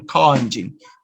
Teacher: in british system you use the back vowel